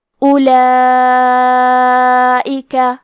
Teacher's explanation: مد واجب متصل کا معنی ہے کہ حرف المد اور اس کی وجہ جو کہ حمزہ ہے دونوں ایک ہی کلمہ میں ہو۔ اس مد میں ہم اپنی آواز 4 مد کے برابر لمبی کریں گے · کلمت اولئک میں حرف الواو ہے لیکن ہم واو کو ظاہر نہیں کریں گے، الف کو پیش سے پڑھ کے حرف اللام کو پڑھنا ہے۔ لام کے بعد کھڑا زبر ہے اور اس پہ مد کا علامہ ہے، یہ مد واجب متصل ہے۔